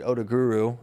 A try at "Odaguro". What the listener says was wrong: You guys call him Odaguru. There's an O at the end. Odaguro is how I would look at it and pronounce it. But you guys say Odaguru.